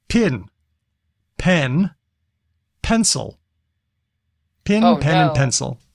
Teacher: if you have the pin and Pen merger then this will be tough